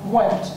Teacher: I mean, we've all taught children who spell went, W-E-T, because they can't hear that N in it, that faint nasalization of the T that we know is an N sound